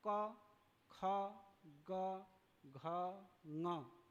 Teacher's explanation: जिह्वा मूल का अर्थ है जिह्वा की जो जड़ है वो कंठ में टकराता है, और टकराकर ये अ जहाँ से उच्चारण होता है उसी प्रकार क का भी उच्चारण होता है। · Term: कंठ्य वर्ण